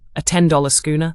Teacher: Number seven is the echo question, where you repeat part of what someone said, but with a rising tone to show surprise or ask for clarification. If your friend says, "I just had a $10 schooner." You might reply, "A $10 schooner?